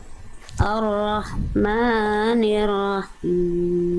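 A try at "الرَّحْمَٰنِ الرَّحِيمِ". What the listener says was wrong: Maknya kepanjangan cukup 2 harokat. Ar-Rahmanir-Rahim.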